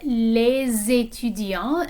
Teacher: Okay, of course we have les étudiants, and notice that the S in les is pronounced when it's joined onto this word that begins with a vowel